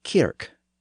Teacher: many Northern words had had a hard k sound where the southern version had a softer CH sound that hard k sound in the north was partly a feature